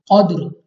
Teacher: कौफ हरूफ मुस्तारिया में से मुंह और आवाज को खोल कर यानी मोटा करके पढ़ना है। दाल हमारे पास हरूफ कलकला में से है, तो हमने यहाँ पे कलकला करना है, यानी हमारे मखरज में जुम्बश सी महसूस हो, यानी हमें अपनी आवाज वापस सुनाई दे।